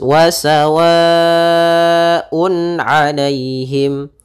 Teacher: Izhar halqi, yaitu apabila terjadi adanya adanya tanwin atau nun sukun bertemu dengan huruf halq, yaitu ada huruf hamzah, ha, ain, ha, ghain, kha, maka suara tanwinnya atau suara nun sukunnya harus dibaca dengan jelas. Maka di sini wasawaun alaihim, tanpa adanya tahanan di gunnahnya atau tidak menahan gunnah, tapi jelas saja wasawaun alaihim.